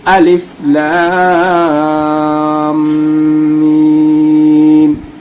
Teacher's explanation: لام کے اوپر مد ہے اور میم سے ملانا ہے